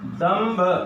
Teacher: भ होने के कारण अनुस्वार का उच्चारण भ का पांचवा म हुआ।